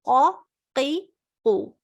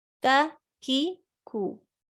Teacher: Qaf is pronounced way behind from the fleshy palate, and kaf is pronounced a little bit ahead toward the mouth.